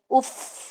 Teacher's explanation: फा की सिफ्त ये है कि उसके अंदर हम्स आना जरूरी है, फा। ठीक है, उफ ये आवाज हवा की, जब आप अपने अपनी उंगलियों को या हाथ को सामने रखेंगे आपको हवा महसूस होनी चाहिए।